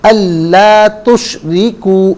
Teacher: और ये असल में अन ला तुशरिकु, अन अलहदा, ला अलहदा, तुशरिकु अलहदा। नून साकिन के बाद लाम है तो इसीलिए फिर हमज़ा को लाम के साथ मिलाकर पढ़ेंगे। नून की आवाज़ अदा नहीं की जाएगी।